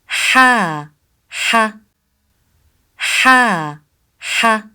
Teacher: The sound of ha comes from the middle part of throat.